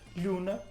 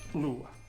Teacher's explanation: O N, que existia entre 2 vogais, como na palavra luna, não é? Em mirandês conservou-se. E nós dizemos hoje lhuna, enquanto que em português caiu e deu lua.